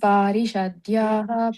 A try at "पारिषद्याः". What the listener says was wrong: So when we are reciting, we don't pronounce the visarga like parishadyaha. We don't have to say that parishadya. If you are saying that word alone, then you have to say parishadyaha. But if you are singing that together along with another word, yasya dvirada vaktradhya parishadhya parashatam. So not much emphasis on the visarga.